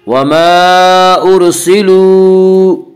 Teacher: وَمَا أُرْسِلُوا، واو مدہ، واو مدہ وہ واو جو ساکن ہو اور اس سے پہلے پیش ہو، واو مدہ کو 1 الف کے برابر کھینچ کر پڑھیں گے